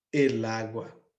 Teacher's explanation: quando eu troco o lá por ele, não tem mais esse encontro desses 2 As